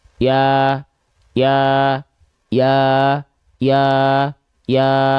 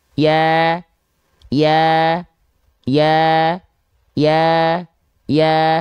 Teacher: karena dia vokal a maka dia mesti dilafalkan dengan kadar tipis yang terjaga